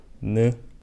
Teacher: For some more basic consonants, we have n, aka niun, is also shaped after the tongue, where the tip of the tongue will touch the front ceiling, and the tongue will make that nice n shape. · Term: N sound